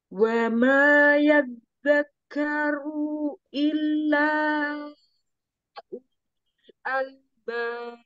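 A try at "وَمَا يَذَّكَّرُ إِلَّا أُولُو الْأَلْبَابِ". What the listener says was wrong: Runya, runya kepanjangan satu harokat saja. Iya betul, cuman tadi di ru ya zakaru umi kepanjangan.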